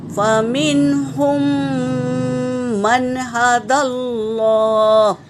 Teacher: پہلے میم کو دوسرے میم میں ملا کر غنہ کرنا ہے